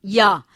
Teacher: जीवा का अग्र भाग जो है वो तालु की ओर उठता है, पर स्पर्श नहीं होता। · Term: अर्धस्वर